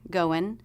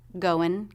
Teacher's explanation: you can either end with the ng consonant or with the n consonant